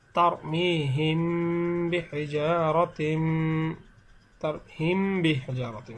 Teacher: মিমে সাকিনের পরে যদি বা আসে, তাহলে মিমে সাকিনকে গুণনা করে পড়তে হয় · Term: ইকফা